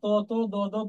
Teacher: আর তারপরে আছে দন্ত, ত ত দ দ দন্তন্য, এগুলো উচ্চারণ করার সময় দাঁত, দন্ত মানে দাঁত, আমাদের জিহ্বাকে দাঁতের গোড়ায় হিট করে